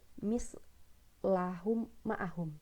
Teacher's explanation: Jadi seolah-olah tuh kayak oh mimnya cuma satu gitu, karena ngelebur · Kayak mim sukunnya itu seolah-olah ngelebur ke mim selanjutnya gitu. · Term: idgham mimi